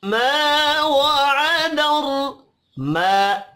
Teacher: रा जबर की वजह से पुर पढ़ा जाएगा।